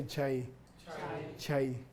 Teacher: it's a slight Y sound at the end of the word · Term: diphthong